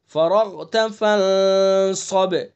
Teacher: فرغت را کو پر پڑھیں گے، غین کو بھی پر پڑھیں گے